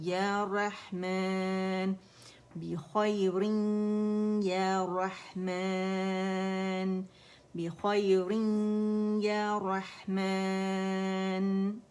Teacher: یا باریک ہوگا، یا کر کے نہیں پڑھیں گے